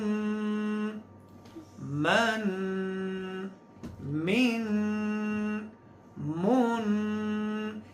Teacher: یہ ناک سے جو آواز ہم نکال رہے ہیں اس کا نام ہے اخفا، یعنی غنہ، آواز کو چھپانا